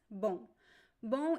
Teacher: It's a nasal, so the M only works to make the vowel O nasal in this word. There is no M sound.